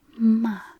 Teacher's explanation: and finally ma, falling tone, to scold.